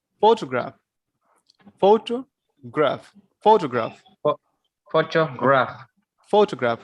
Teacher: here we are putting stress on the first syllable, photograph.